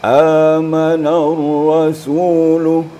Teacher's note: Su itu ditekan. Jadi sehingganya dia akan terpanjang sendiri.